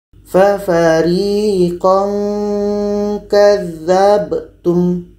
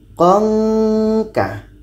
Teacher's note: ketika tanwin bertemu ka ini pun ada bunyi nge, karena letaknya pada ikhfa ab'ad, jauh daripada huruf nun.